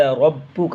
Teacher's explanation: را کو موٹا کر کے با پہ سختی کرنا ہے